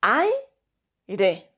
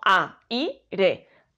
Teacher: La A y la I quedan unidas formando ese diptongo.